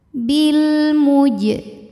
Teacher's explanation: yang sukunnya ini sukun asli dan ada di tengah bacaan kita maka jimnya kita pantulkan dengan pantulan yang kecil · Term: Qalqalah Sugra